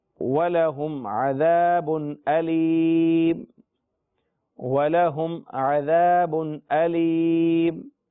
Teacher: عذاب پر بھی غنہ نہ کرنے کی وجہ یہ ہے کہ تنوین کے بعد حروف حلقی میں سے حمزہ آ رہا ہے، لہذا غنہ نہیں کریں گے